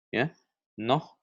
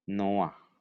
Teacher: penambahannya di model ada huruf A sebelum, akhiran he, het, ayin